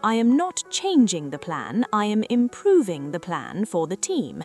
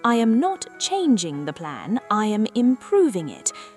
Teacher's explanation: Hear how I lengthened the vowels in improving and optimization. I made the important words twice as long as the small words. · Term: contrastive stress